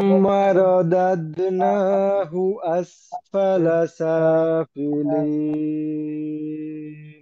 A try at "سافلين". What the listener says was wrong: শেষে নুনে একটু সময় দিতে হবে। লিন, লিন, এক আলিফ যতটুক টানি এর অর্ধেক পরিমাণ সময় নুনে দিতে হবে, প্রত্যেকটা জজমে তাসদিদে দিতে হবে।